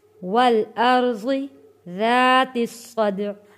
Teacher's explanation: یہاں پہ دال حروف قلقلہ ہے، دال پہ قلقلہ ادا کرتے وقت پھر ہم نے عین پہ وقف کر دینا ہے۔